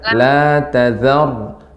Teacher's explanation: La Ta-nya tipis, zalnya juga tipis. Yang tebal ro-nya. Jadi pengucapannya la tazar.